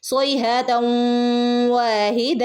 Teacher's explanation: തൻവീനിന് ശേഷം വൗ വന്നാൽ നമ്മൾ എന്ത് ചെയ്യും മണിച്ചു കൂട്ടി ചേർത്ത് ഓതും